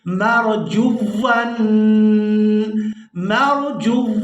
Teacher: اب یہاں پر مسٹیک یہ کی جاتی ہے کہ یہاں مرجو، اب یہاں پر مسٹیک یہ کی جاتی ہے کہ اس لفظ کو مجبور اس طرح سے ادا کیا جاتا ہے مرجون، یعنی جیسے یہاں پر ہم واو کے اوپر جزم کو ادا کر رہے ہوں، یہاں پر جزم نہیں ہے بلکہ شد ہے، تو جیم کو واو کے ساتھ ملاتے ہوئے سختی کے ساتھ ادا کریں گے